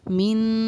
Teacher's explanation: نون کو یعنی کہ چھپا کر پڑھنا ہمارا اخفا کہلاتا ہے